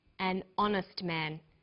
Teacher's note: So we say a happy man, but an honest man. The H is not pronounced, so honest sounds like it starts with a vowel.